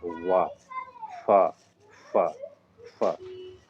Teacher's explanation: दांत और ओठ दोनों मिला के दंतोष्ठ होता है। निचला ओठ ऊपरी दांत से।